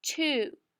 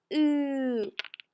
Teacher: Ooh is a voiced sound because if you put your hand on your neck and say ooh, you can feel it vibrate.